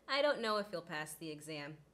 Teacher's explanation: he as i mentioned is one of those words that is susceptible to h elision